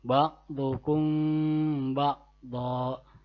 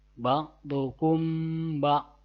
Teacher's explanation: dua bibirnya tidak dirapatkan secara sempurna